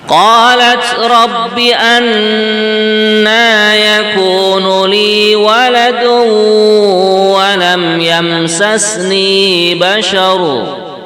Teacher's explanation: ni-nya panjang 2 harokat